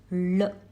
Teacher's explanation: It is a deep sound, la. It is a murdhanya or a cerebral sound which is formed by rolling the tongue and touching the roof of the mouth